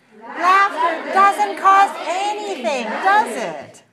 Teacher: If you're sure this is true, use falling intonation.